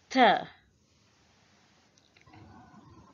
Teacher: Th is a dental sound. Tongue touches the back of the front teeth.